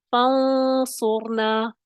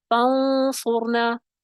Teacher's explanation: صاد موٹا پڑا جاتا ہے تو اخفا کی کیفیت بھی کیا ہوگی؟ موٹا اخفا ہوگا